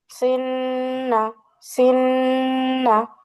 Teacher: টান হবে না, টান বাদ দাও, শুধু গুণনা করো